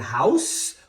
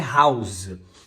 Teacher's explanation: Você muda de um S para um Z, você muda o significado.